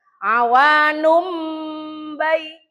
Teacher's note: maka nun mati atau tanwin berubah menjadi huruf mim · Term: iklab